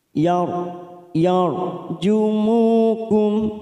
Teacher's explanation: ro sukun yang sebelumnya fathah kita baca tafkim